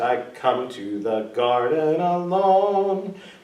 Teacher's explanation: So we say the word garden with the stress on the first syllable.